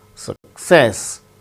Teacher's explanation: Success, with stress on second syllable.